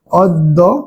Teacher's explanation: অ এর উচ্চারণ ও এর মতো হবে, কারণ জফলা রয়েছে।